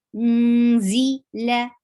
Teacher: For dhamma, circle your lips, and ikhfa, you're hiding noon and going towards the makhraj of za